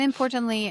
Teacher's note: it can be flapped where the tongue just kind of slaps against that alveolar ridge and comes like a D